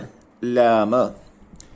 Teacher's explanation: നാവിന്റെ തലയുടെ അരിവും മേലെ മുൻപല്ലിന്റെ ഊനുമാണ് ലാമിന് ഉപയോഗപ്പെടുത്തേണ്ടത്.